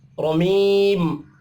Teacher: रा को ज़बर की वजह से पुर पढ़ना है